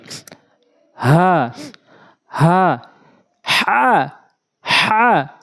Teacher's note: হা হলকের শুরু থেকে একদম নরমালি